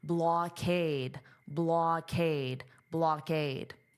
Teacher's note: And notice the pronunciation of this ending is aid, aid, aid. Now, because of the way the syllables will be divided, it will sound more like blockade. So you'll hear this K sound on the aid.